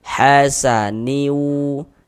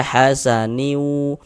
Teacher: Tapi bunyi tanwinnya masuk melebur ke huruf wau sehingga dibaca hasaniu. Kemudian di bagian niunya itu suaranya itu kita tahan, kita panjangkan sepanjang dua harakat karena dia dighunahkan. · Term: idgham ghunah